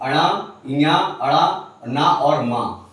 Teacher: ये वर्ण आपके, ठीक है, नासिका से उच्चारित होते हैं